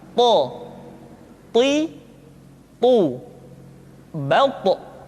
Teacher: ketika to diucapkan, suara kita terdengar menebal. · To diucapkan dengan menyentuhkan ujung lidah dengan gusi-gusi dua gigi seri bagian atas. Sifat yang dimiliki oleh huruf to yang mesti nampak ketika kita ucapkan adalah sifat al-isti'la dan sifat al-itbaq.